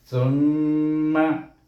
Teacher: mim bertasydid kena baca dengan gunnah. Bunyinya summa, kemudian terus sambung dengan lam di sini Ini tak ada hukum kat sini.